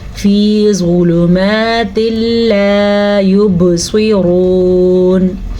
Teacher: ज़्वा भी हरूफ़ मुस्तालिया में है, हमेशा पुर पढ़ा जाता है. लाम को लंबा नहीं करना.